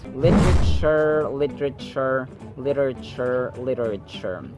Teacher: we have to put a little emphasis on the second syllable, where actually T is pronounced as a D sound. T, to sound like an American speaker.